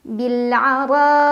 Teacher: Cara bacanya alif lam dibaca jelas. Bil'ara, ra dibaca secara tafkhim karena ra berbaris fathah jadi bacanya tebal